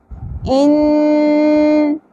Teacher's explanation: رول امپلیمنٹ ہوگا تجوید کی رو سے جس کو کہتے ہیں غنہ یعنی ناک میں اواز کو ٹھہرائیں گے